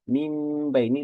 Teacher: bunyi nun sukun itu justru berganti atau beralih menjadi bunyi mim sukun